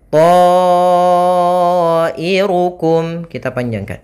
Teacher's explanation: Yaitu di sini ada alif berupa huruf mad datang setelahnya hamzah, dan hamzah tersebut terletak pada satu kata. Maka to yang awalnya 2 harokat berubah menjadi 4 harokat disebabkan karena adanya hamzah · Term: mad wajib muttasil